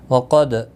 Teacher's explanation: قاف مستعلیہ ہے، پر پڑھا جائے گا، دال ساکن پر قلقلہ ہوگا